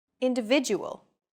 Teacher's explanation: are stressed are valued greater than syllables that are unstressed individual the stressed syllable V in individual is deemed more important so it's pronounced longer than all other syllables